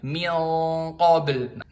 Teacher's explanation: Huruf isti'la alias pangkal lidahnya diangkat. Jadi bukan min qabl sambil diangkat pangkal lidahnya, tebal jadinya.